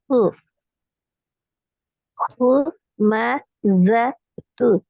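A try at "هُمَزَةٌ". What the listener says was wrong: ஆ நீட்டா கூடாது. நீட்டுப்படுது நீட்டுப்படுது.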